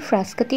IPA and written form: fraˈskaːti (Frascati)